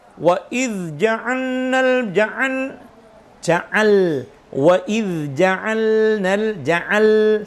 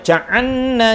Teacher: Makanya pentingnya memberikan sifat tawassut secara sempurna tadi itu supaya benar-benar tidak terdengar bacaan idgham yang sering kita baca wa idz ja'alnal ja'al wa idz ja'alnal ja'al, jelas huruf lamnya, tawassutnya lam